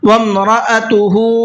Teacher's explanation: حمزہ کو الگ کر کے پڑھنا ہے، اس کا ساؤنڈ الگ رہے گا حمزہ کا۔ وَامْرَأَتُهُ، اور ہا کو کھینچ کر کے پڑھنا ہے۔